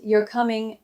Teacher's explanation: If I say it with a rising tone, you're coming, I'm asking. But if I say it flat, you're coming, I might just be confirming something.